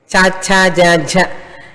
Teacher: నాలికలో వంకర లేదు, పైకి పోలేదు కిందికి పోలేదు, స్ట్రైట్గా ఉంది